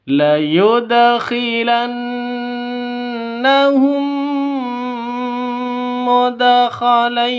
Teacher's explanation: Di sini ada seorang mim yang sudah mati bertemu dengan mim lainnya. Cara membacanya adalah dengan masuk ke mim kedua, ya. Karena ini adalah pembacaan Idgham Mimi.